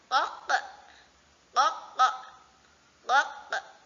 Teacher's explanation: Jadi ee untuk teman-teman biasanya mengucapkan qof-nya itu masih berada di depan gitu masih ko gitu. Jadi ee bisa lebih dalam lagi ee menggunakan pangkal lidah yang ditempelkan ke anak tekak bagian atas